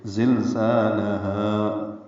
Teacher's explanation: زا اور ہا دو حرکات لمبے کریں گے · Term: الف مدہ